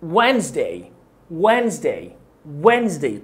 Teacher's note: اول حاجة الدي سايلنت مش هنطقها، والاس برضو هيكون صوتها ز